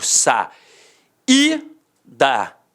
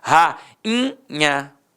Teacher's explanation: O I ficou o quê? Nasalizado.